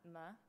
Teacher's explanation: if you try to make an m sound ma you'll notice that you're using your lips